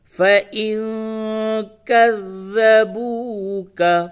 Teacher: نون ساکن کے بعد کاف ہے، اس جگہ پہ اخفا کریں گے